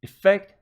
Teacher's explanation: effect as a noun again the stress is on the second syllable